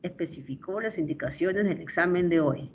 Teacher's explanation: Una afirmación. Y en las afirmaciones la entonación desciende.